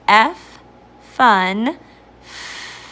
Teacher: your voice box is turned off your top teeth are placed on your bottom lip like you're biting it but not hard and it's a stretchy sound